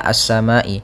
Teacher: maka kita namakan dengan mad wajib muttasil panjangnya empat harakat